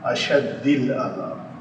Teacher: الہ کے بعد آنا ہے تو اس نے مجرور ہونا ہے، تو یہ لفظ بن جائے گا اش دی، تو یہ پھر دو ہم جنس حرف اکٹھے آ گئے اور اس سے پہلے ماقبل ساکن ہے، تو ہم اس دال کی حرکت اس کے ماقبل کو دیں گے، تو یہ شین جو ہے مفتوح ہو گیا، یہ دال ساکن ہونے کے بعد اس دال میں مدغم ہو جائے گا، تو یہ اس کی کسرہ میں ہوگی، یہ لفظ بنا اشد العذاب۔